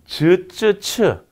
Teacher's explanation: 폐쇄음과 마찰음을 모두 가지고 있더라. · 이렇게 소음 성분이 같이 들어가 있는 거예요. 그러니까 비유를 들자면 막혔다가 마찰하는 소리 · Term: 파찰음